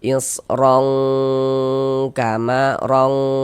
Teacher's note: Di bagian rongnya itu kita tahan suaranya, kita panjangkan sepanjang 2 harokat, kita dengungkan atau kita gunnahkan.